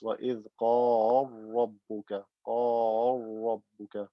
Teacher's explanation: Merge the lam into the ra. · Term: idgham kabir